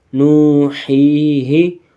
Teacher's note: ہا ساکن ہو جائے گا اور اس سے پہلے یا مدہ، تو یہ یا اور کھینچ کے پڑھی جائے گی